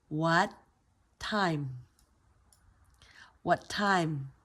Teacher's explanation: because it's a stop T, your T ends up at the roof of your mouth.